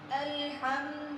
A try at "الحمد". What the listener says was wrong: الحمد نہیں, الحمد. ہا کو اس کے مخرج سے ہا نہیں پڑھنا. دال پر پیش ہے اور پیش کو ادا کرتے ہوئے ہونٹوں کو گول کرنا ہے.